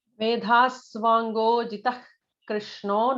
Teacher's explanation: notice that Visarga followed by a ka would have an ich kind of a sound.